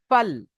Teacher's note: ফা নিচের ঠোঁট এবং সামনের 2 দাঁতের আগার সাথে লাগিয়ে উচ্চারিত হয় ফা। ফাল, মাঝখান থেকে একটা ছোট্ট একটা হাওয়া বার হয়ে যাবে।